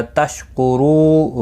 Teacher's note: واو مدہ ہے، ایک الف کی مقدار کے برابر کھینچ کر پڑھیں گے